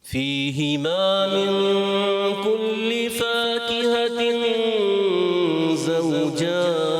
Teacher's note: فا کو ایک الف کھینچیں گے، زیادہ نہیں